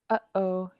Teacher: this period in the middle of the word gi tells us to stop the air in our throats. So just like in English when you say uhoh, you stop the air.